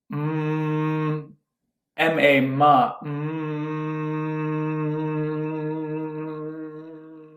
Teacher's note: Now we put our hands on our cheeks, and when I say the M syllable, A-U-M, M is with the mouth closed, the lips are shut, and you say any sound.